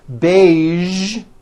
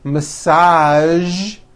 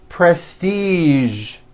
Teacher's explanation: there are only a few words that have the voiced zh sound at the end. A few of these words are the color beige, the word massage, and the word prestige.